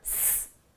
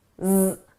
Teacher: The S is at my lips, it's unvoiced. The Z is in my throat, my vocal cords are engaged, it's voiced.